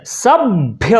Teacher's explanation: भ के पहले अपने आप ब आ जाएगा। यानी कि जब भी महाप्राण लिखा होगा पहला संयुक्त व्यंजन का पहला ये महाप्राण होगा।